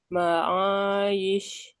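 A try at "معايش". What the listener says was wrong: ya tipis. Dan diangkat ke atas rahang bawahnya. Tapi lebarkan mulut bagian bawah dilebarkan justru ya. Kuncinya ain tipis juga itu salah satunya mulut dilebarkan. Kalau yang tadi naik suaranya ke atas.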